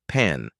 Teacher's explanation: both lips together then release with a burst of air. Hold your hand in front of your mouth to feel it.